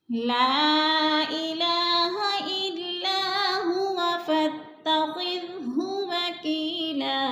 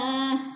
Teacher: ला पे मुनफसिल है, चार अलिफ मद है, चार अलिफ के बराबर